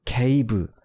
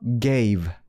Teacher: K는 무성음, 그리고 이제 G는 유성음 해서 그냥 기억이랑도 이게 뭔가 유사하지 않고 훨씬 더 울림이 있어줘야 된다는 거죠.